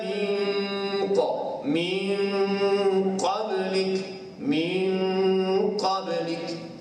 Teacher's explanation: Daripada huruf-huruf tebal ni ada beberapa huruf yang termasuk dalam huruf ikhfa. Huruf ikhfa ni bila kita dengung bertemu dengan qaf, qaf ni huruf tebal, bunyi dengung tu ke arah tebal.